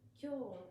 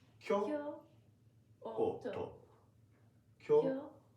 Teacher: It's like going up and then down, no? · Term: pitch